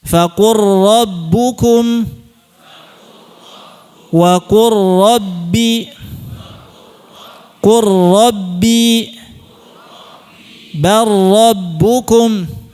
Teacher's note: dikamilkan, sempurnakan langsung ke ra tanpa ada gunnah. Jangan dilamakan. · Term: Idgham mutaqaribain